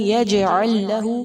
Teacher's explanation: یجعل میں جیم بھی حروف قلقلہ میں سے ہے، اس کو ہلا کر ادا کریں گے، یجعل نہیں، یجعل لہ، لام ساکن کو لام مشدد کے ساتھ ملا کر پڑھیں گے، یجعل لہ۔